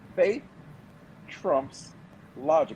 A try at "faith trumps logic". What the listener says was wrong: You said it again. Fake trumps logic.